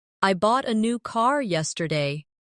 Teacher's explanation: The stressed words are bought, new, and car. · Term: sentence stress